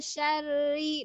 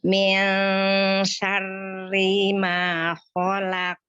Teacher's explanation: Maka dia nggak perlu pakai bantuan bibir karena mengalir sudah ketika pengucapan nun sukunnya itu sudah ngalir ke shin. Udah sambil nyengir tuh ketika mengucapkan nun sukunnya, bukan nun mantap-mantap nun. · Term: ikhfa